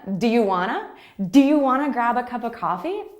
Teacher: So do you becomes do ya, and want to becomes wanna.